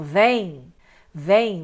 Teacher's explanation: você tem o som do E e do I, né? O E nasal por causa do M aqui, que você tem tanto uma nasalidade, mas o M se torna I. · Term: ditongo nasal